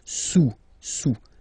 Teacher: Don't pronounce the final S, and then this OU combination of vowels is pronounced OU.